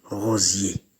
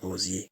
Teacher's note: Le français en compte 3. Le iode, I, est une semi-consonne fricative dorsopalatale sonore.